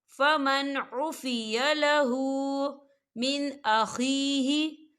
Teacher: نون ساکن کے بعد عین آ رہا ہے، اور عین جو ہے حروف حلقی کا ورڈ ہے تو ہم یہاں پر اظہار کریں گے اور اسے ہم بغیر غننے کے پڑھیں گے